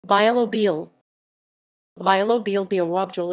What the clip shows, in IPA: bjaˈwɔbjɛl